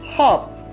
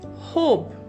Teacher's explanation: From the word hop, it became hope. The silent E at the end has changed the sound of vowel O from shorter sound to the longer sound